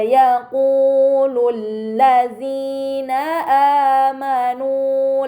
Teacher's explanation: Pada kata wa yaqulu terdapat harokat dhammah bertemu waw sukun, ini dinamakan mad tabi'i, maka harus dibaca panjang selama 2 harokat.